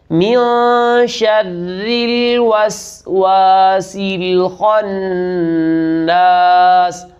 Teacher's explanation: اس مقام پر را کو باریک کریں گے، اس لیے باریک کریں گے کہ را کے نیچے زیر ہے ، من شر الوسواس الخناس، خا موٹے حروف میں سے ہے